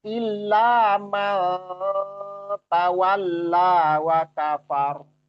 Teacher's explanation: Jadi nggak dibaca man, nggak diperjelas seperti itu nunnya, namun samar, ya samar. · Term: ikhfa